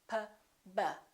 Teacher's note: P and B, P and B, have the same point of articulation because both of them require the lips to close